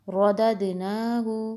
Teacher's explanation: رو کو موٹا، دال کے اوپر قلقلہ ہوگا کیونکہ یہ ساکن ہے